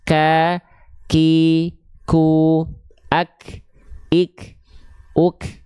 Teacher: Maka ketika kita lafalkan, itulah kenapa ada sedikit perbedaan tadi mengakibatkan adanya perbedaan sifat. Kalau kaf dia itu agak keluar sedikit, menghasilkan ada percikan nafas.